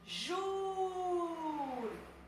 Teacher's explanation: Aqui eu tenho minha última sílaba, que não é a tônica, então a tônica é a penúltima, por isso que ela é uma paroxítona.